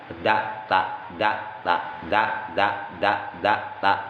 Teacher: makhraj Dal dengan ta itu sama-sama Min aqsal lisan dari ujung lidah